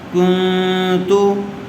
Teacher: نا، کرامن کاتبین، انت منذر، کرامن کاتبین، کاف نون پیش کن، نون ساکن کے بعد حروف اخفا میں سے تا آیا ہوا ہے، اس لیے غنّے کے ساتھ اخفا کر کے پڑھیں گے